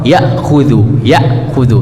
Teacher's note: Hamzah ketika dia sukun maka akan kita tekan